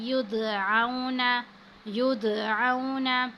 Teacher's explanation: دا ساکن ہے، یہاں پہ ہم نے قلقلہ کیا ہے